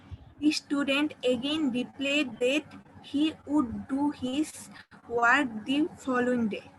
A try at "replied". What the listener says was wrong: এখানেও উচ্চারণ একটা ভুল হলো, রিপ্লে না, এটা হচ্ছে রিপ্লাইড। এটা হচ্ছে রিপ্লাইড উচ্চারণটা, হ্যাঁ, রিপ্লাইড। তোমারটা মানে অ্যাবসলিউটলি রাইট হয়েছে, শুধু উচ্চারণে কিছু প্রবলেম হয়েছে আর কি।